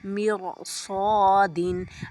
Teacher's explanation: را ساکن سے پہلے کسرہ ہو اور ما قبل حروف مستعلیہ میں سے کوئی حرف اس کلمے میں ہو تو را پر ہوگی، جیسے مرصادن۔ را ساکن کے بعد صاد ہے نا حرف مستعلیہ میں سے، تو ہم را کو پر پڑھیں گے